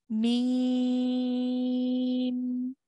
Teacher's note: we're going to say mim, but we're going to stretch that mim sound for 4 counts.